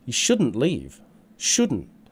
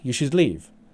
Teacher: notice the stress on shouldn't compared to should being weak